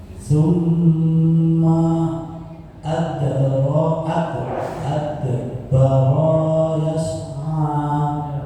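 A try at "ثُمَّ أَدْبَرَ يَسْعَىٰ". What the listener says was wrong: Baronya pendek. Adbaro yas'a. Lagi.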